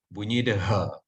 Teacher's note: Kalau ha bersimpul, dia kedudukan dia dekat sini, dekat pangkal kerongkong. Jadi bunyi dia tu agak keras sikit.